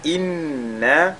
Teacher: Ici, inna, nous avons la lettre nun qui est mushaddada. La lettre nun qui est mushaddada, sur laquelle on fait donc al-ghunna.